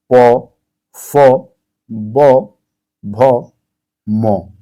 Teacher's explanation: आप जब इन सभी अक्षरों को आप मुंह से अपने बोल रहे हैं तो आप ध्यान देंगे सबसे ज्यादा जो रोल अपना प्ले कर रहा है वो ओष्ठ है। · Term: ओष्ठ व्यंजन